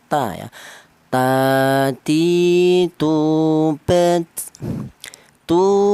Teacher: Huruf ta ini kelannya huruf berasal dari ujung lidah menyentuh pangkal gigi seri bagian atas